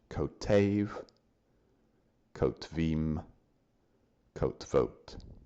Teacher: Notice that the first form, kotev, masculine singular, and both plural forms, kotvim, kotvot, just have 2 syllables each, stressed at the end.